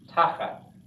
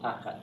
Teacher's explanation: Accent on the first syllable